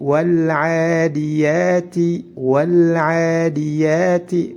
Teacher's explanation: ainnya juga dibaca panjang 2 harokat karena disitu terdapat Alif sebelumnya fathah maka dihukumi harus dipanjangkan 2 harokatnya juga harus panjang 2 harokat · lam sukun yang terdapat pada kosakata Al atau biasa disebut dengan lamtarif harus dibaca jelas jika bertemu dengan huruf Ain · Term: izhar Qomariyah